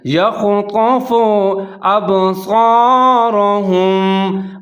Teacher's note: با کو ہلانا ہے، یہ حروف قلقلہ ہے، حروف قلقلہ میں شامل ہے، تو یہاں پر آپ نے قلقلہ کرنا ہے۔